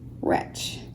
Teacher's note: the W is silent. You can hear the R come through. The W is silent, but you have R, H, and the CH digraph we learned very many weeks ago is there as well.